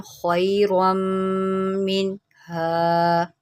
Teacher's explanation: मैंने इस मीम में गुन्ना किया